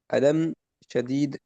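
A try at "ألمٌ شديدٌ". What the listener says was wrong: इराब पूरे वाजे करें बेटा, अलमुन शदीदुन, पूरे इराब वाजे करें हैं।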